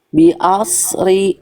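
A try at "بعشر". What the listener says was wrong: Bukan os, itu mah sod jadinya. Bi'ash. Bi'ashri. Itu mah sod. Os, itu bukan shin itu. Itu sod. Tengah lidahnya diangkat. Bi'ash. Bunyinya begitu. Kalau dilatinkan tuh SY Bunda. Nah, itu mah bi'os, itu mah os ini. Harusnya ada Y-nya. Bi'ash.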